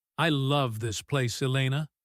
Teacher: When she says, I love this place, her voice goes up high. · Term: affect